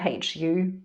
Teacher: the lips and blowing the air out through the mouth but we are making the h sound at the beginning and we're making that as a continuous sound by pressing the back of the tongue up against the roof of the mouth and by doing that sort of closing a little bit the